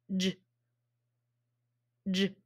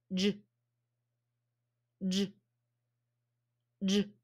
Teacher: is it not vibrating it's vibrating so that means it's voiced my mouth is blocked though and it's voiced so it can't be a vowel